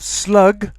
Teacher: If it ends with a g, which is voiced, the plural will be voiced.